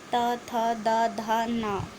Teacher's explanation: और फिर आपका दंत, मतलब दांत से आपका ता वर्ग बोला जाता है